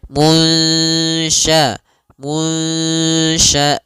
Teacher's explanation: secara keseluruhan sempurna atau masih ada sedikit yaitu idgam naqis nah caranya adalah kita samarkan nunnya kepada huruf syin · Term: Ikhfa